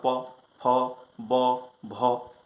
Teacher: मुंह में हवा भर जाता है, जो ही खोलते हैं तो उसका उच्चारण होता है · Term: ओष्ठ